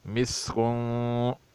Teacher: قدحن، بغیر کلکل کے پڑھ رہا ہوں جو صحیح نہیں ہے، قدحن یہ صحیح نہیں ہے، بلکہ پڑھا جائے گا قدحن، یغنی، لغوا، وا پر دو زبر ہے، اس پر اخفا کیا جائے گا، لغوا، مسکن، تینوں حروف پتلے ہیں، سین پر سختی سے ادا کیا جائے جیسے سیٹی کی سے آواز نکلے